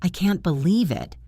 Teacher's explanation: Rising pitch, uncertain. That is asking for clarification.